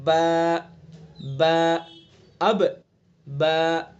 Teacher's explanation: बा का मखरज दोनों होंठों की तरी का हिस्सा, दोनों होंठों की तरी का हिस्सा, अंदरूनी जो हिस्सा जो तर रहता है हिस्सा, होंठों के अंदर एक हिस्सा है बाहर वाला जो खुश्की वाला हिस्सा कहलाता है, और एक हिस्सा है अंदर वाला हिस्सा जो तरी वाला हिस्सा कहलाता है।